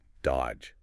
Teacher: You don't say that middle D at all. It's just dodge. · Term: Completely silent